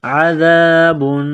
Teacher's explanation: زبان تھوڑی سی باہر نکالیں گے ذال کو پڑھتے وقت